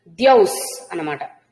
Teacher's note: భక్తానాం పురుషోత్తమే భవంతికృత పుణ్యానాం భక్తానాం పురుషోత్తమే ఇక్కడ ఇక్కడ చూడండి ద్యౌహు ఇక్కడ విసర్గ సకారం అవుతుంది ద్యౌస్ అన్నమాట